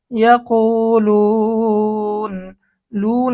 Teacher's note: লুন এখানে যদি আমরা ওয়াকফ করি তাহলে মধ্যে আরজি হয় তিন আলিফ টান, কারণ পেশের পরে ওয়াও সেকেন্ড মদের হরফ, মদের হরফের পরে ওয়াকফ করার কারণে মধ্যে আরজি তিন আলিফ টেনে পড়তে হবে